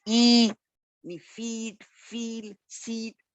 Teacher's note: In the pronunciation of these walls, these words, जब वो ई की हम वो उसमें प्रोनाउंस कर रहे होते हैं तो tongue is very close टू the पैलेट.